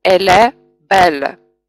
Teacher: мы вот эти два слова читаем слитно, как будто это одно слово. И получается «elle belle». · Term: enchaînement